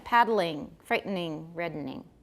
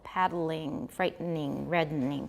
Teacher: with the division between them as shown by the inserted period alternatively they can be said as three syllables with a syllabic nasal or lateral in the middle